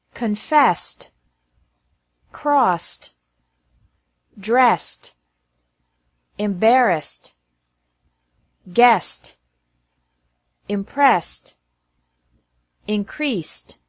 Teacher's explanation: Ed is also pronounced like T after verbs ending with an S sound.